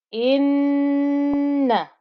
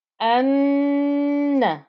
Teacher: you can hear the nasal humming noise on there